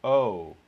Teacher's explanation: the way that i think that most americans realize this diphthong is uh that there's a little bit of lip rounding · there's a little bit of lip rounding and so that's why i use this diacritic which is a tweak to the symbol that says reduced lip rounding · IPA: o̜ʊ